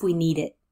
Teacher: find out you see the same thing happening with need it that D pushes forward on to the vowel which is following